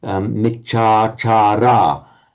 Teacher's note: under the phonetics of English, it's a bit unnatural for us to have those three long vowels